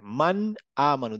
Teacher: এই ক্ষেত্রে আমি কোন গুন্না করবো না মানে নাকে তুলে মান এরকম করবো না ঠিক আছে ক্লিয়ার নুনের উপরে একটা ধাক্কা খেয়ে বের হয়ে যাব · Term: ইধার